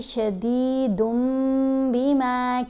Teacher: یعنی نون ساکن یا تنوین کے بعد اگر حرف با آ جائے تو یہاں دال کے اوپر 2 پیش ہیں، تنوین ہے آگے با ہے. اب ہم نے شدیدن میں جو نون کی آواز ہے اس کو میم کی آواز میں بدلنا ہے تو آواز بن جائے گی شدیدم بما کانوا یمکرون. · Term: اقلاب